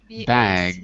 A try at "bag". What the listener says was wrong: say it with a G. Bag.